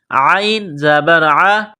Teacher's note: گلے کے درمیان سے زور لگا کر عین کو نکالیں گے